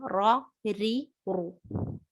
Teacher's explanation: रॉ में जुबान का आगे वाला हिस्सा ऊपर टच होगा, लेकिन साइड्स ऊपर ज्यादा प्रेशर लगाएंगे और बीच वाला हिस्सा थोड़ा सा डिप होगा, थोड़ा सा नीचे होगा, जिससे रॉ रॉ ऐसी आवाज आती है.